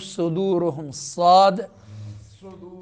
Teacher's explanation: صاد صدور سیٹی والا حرف ہے، پر سیٹی اس میں نکالنی ہے اور اس حرف کو پر ادا کرنا ہے